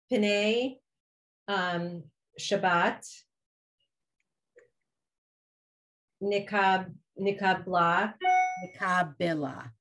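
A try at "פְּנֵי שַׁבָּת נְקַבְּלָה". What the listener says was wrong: Right. Okay.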